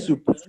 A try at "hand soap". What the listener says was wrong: So there's a difference between soup and soap. Soup is what you eat.